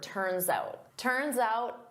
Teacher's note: So, I'm using that s to glide to the next word, but I say it as one word.